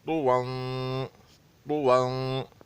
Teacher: तुवन में या नहीं पढ़ा जाएगा बल्कि ता और वा पढ़ा जाएगा